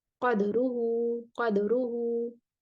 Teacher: क़दरुहू को नाफे, मक्की, बसरी, हिशाम, शोबा और याकूब ये सब कुरा पढ़ेंगे दाल के सुकून और कलकला के साथ